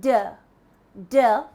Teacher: your throat for the der sound when you say der der you can feel the vibration that is the voice sound